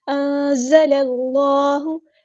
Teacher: لام کو ہم نے لام کے ساتھ ملا دینا ہے، حمزۃ الوصل ہمارا ڈراپ ہو جائے گا